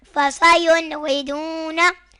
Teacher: فا زبر فا، سین زبر سا، فسا، یا نون پیش یون، فسایون، غین زیر وی، فسایون گوی، ضاد واو پیش دو، فسایون غیدو، نون زبر نا، فسایون غیدونا۔ یہاں نون ساکن کے بعد غین آ رہا ہے تو اظہار ہوگا